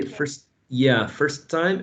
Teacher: In general, speakers say first time, and we forget about the first T, and we sort of keep the second one. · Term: elision